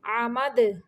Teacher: दाल भी जो है ये कलकला हरूफ में है, यानी साकिन करते हुए इसको हरकत देंगे।